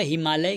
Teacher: एक ह्रस्व आकार है, उसके बाद दीर्घ आकार है। जब ऐसा स्थिति होगा तो दोनों मिलकर दीर्घ आकार हो जाएगा। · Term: दीर्घ एकादेश